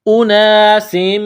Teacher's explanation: سین کو میم کے ساتھ ملانا ہے. میم مشدد ہے تو یہاں غنہ کریں گے، آواز ناک میں چھپائیں گے